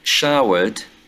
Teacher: we have a post-alveolar consonant sound. Some authors call it palatal as well. It's a fricative sound and it's voiceless.